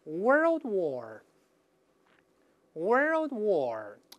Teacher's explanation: 所以美式发音这个舌头得卷得厉害啊